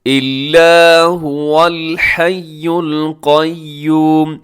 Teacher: الحی پہ بھی تشدید ہے، القیوم یہاں پر بھی تشدید ہے۔ آپ ان دونوں لفظوں کو بہت مضبوطی کے ساتھ پڑھیے گا